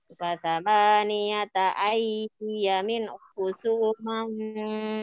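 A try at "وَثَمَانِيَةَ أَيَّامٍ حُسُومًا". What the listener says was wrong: Ulangi ayya yanya dua harokat.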